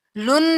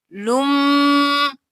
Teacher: لام کو میم کے ساتھ ملائیں گے، لم، اور پھر میم پہ غنہ